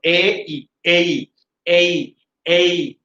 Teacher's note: এটা এ থেকে ই পর্যন্ত একটা গ্লাইডিং আছে